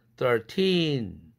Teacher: 뒤에 액센트 있으니까 t가 플랩 되지 않죠.